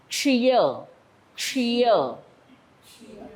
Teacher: क्ष म्हणताना जीभ वरती वाटी होणार आहे साईडने हवा सुटली जाणार आहे म्हणजे टोक वरती लागणार आहे आणि त्याच वेळेला खालचा खालची जी